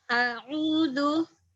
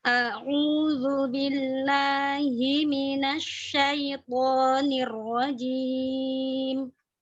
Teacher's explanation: hamzah di awal tidak ke bawah ain ya, tidak a'udzu.